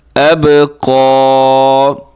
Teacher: با قلقلہ ہے اور قاف موٹا پڑھنا ہے اپنے, اور لمبا بھی کرنا ہے کیونکہ اس کے اوپر کھڑا زبر ہے